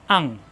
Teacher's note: অনেস্বারের মত গুণ্য করে পড়তে হবে এটাকে গোপন গুণ বলা হয়